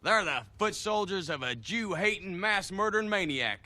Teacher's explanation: Tennessee accents and Southern Accents in general have something called Goose fronting